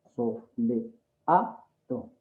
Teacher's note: dentro de esas 4 sílabas, la que suena más fuerte es la A, la sílaba A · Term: sílaba tónica